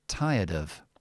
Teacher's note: I would say tire with the schwa, and then I would connect the D to the of, and I would say, when we say this word here, it's not of like that.